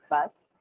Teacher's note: you can't feel the vibration at the end of the word fast because s is a voiceless consonant